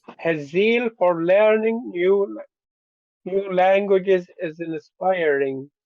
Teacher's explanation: Let's just give everything high tones, okay, except for the final part of the phrase.